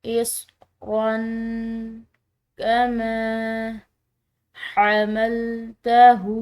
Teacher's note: الٹی پیش کی وجہ سے اس ہا کو ہم نے لمبا ادا کیا